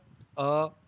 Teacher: मध्य स्वर अ, तो जिह्वा जो है वो मध्य में आपके मुख में मध्य जो स्थान होता है वहाँ पर जिह्वा टच हो रही है